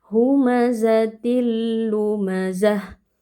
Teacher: Hukumnya idgham bila ghunah. Tanwin dileburkan ke dalam lam tanpa berdengung · Nah, ketika ada ta marbutah atau ta yang bentuknya bulat seperti ini ya, posisinya dia itu waqaf atau kita berhenti pada huruf ta ini, maka kita mengubah bunyi ta ini menjadi bunyi huruf ha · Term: idgham bila gunnah